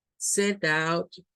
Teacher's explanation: Cuando decimos set out, es más fuerza en out.